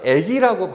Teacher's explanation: 아라는 것이 원래는 후설모음이잖아요. 이 후설모음이 어디로 이동했냐면 전설모음으로 이동했죠. 그죠? 그래서 요 아라는 친구가 에로 바뀐 거. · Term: 모음동화